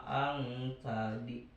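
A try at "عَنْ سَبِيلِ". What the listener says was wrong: Ainnya ang sabi. Bukan ang sabi ain.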